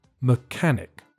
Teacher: the first syllable is weak and there's a silent H.